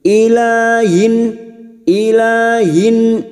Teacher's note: kasr tanwin dibaca jelas tanpa mendengung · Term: Idhar halq